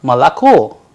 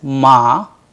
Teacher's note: So, it sounds like Malako, whereas it has 3 O. So, Malako is pronounced as Ma-La-Ko because O not under stress turns into A